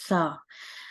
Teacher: जुबान की नोक ऊपर वाले दांतों के किनारों से लगे तो सा